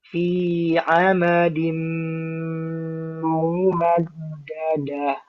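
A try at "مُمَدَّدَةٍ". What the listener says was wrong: Dalnya masih ada udara. Dadah. Dadah. Dadah. Dadah. Di kho ya, ketika sukun tebal.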